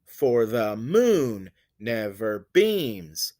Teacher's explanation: i have two unstressed syllables followed by a stressed one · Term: anapest